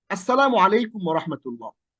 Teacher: আলিফ এসে সরাসরি পরের অক্ষরটাকে ধরে ফেলছে, লামটা এখানে পড়া যায় নাই, লামটা পড়ার দরকার পড়ে নাই, লামটা আমরা পড়ছি না। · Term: সূর্য অক্ষর